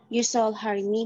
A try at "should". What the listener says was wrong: Should. Bukan shall, should. Huruf O sama huruf L-nya nggak dibaca. You should.